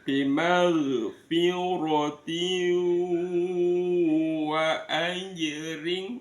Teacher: namanya bacaan idgham bighunah dimasukkan dengan mendengung